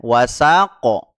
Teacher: maka tetap harus dipantulkan diqalqalah ini disebut Qalqalah Kubro ini hanya istilah saja ya tetap harus mantul walqar di sana